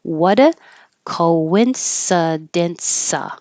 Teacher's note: What a, the T changes to a D.